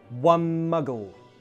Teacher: the ‘N’ in “One” becomes ‘M’ to join muggle